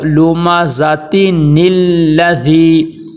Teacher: نون کو لام کے ساتھ ملا دینا ہے